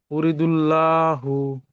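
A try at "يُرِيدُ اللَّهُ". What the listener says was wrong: টান হবে ইউরিদুল্লাহু বলুন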